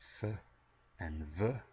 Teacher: Labiodental, using both the lips and the upper teeth, such as f and v.